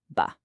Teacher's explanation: Feel that little vibration, that buzz. That's your vocal cords kicking in. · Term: voiced, voiced sounds